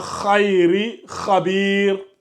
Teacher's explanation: quand tu dis kha, on sent que voilà, c'est déjà une lettre emphatique